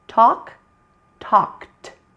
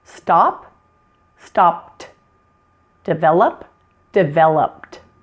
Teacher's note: you'll sometimes hear the ED pronounced as T with that E silent again.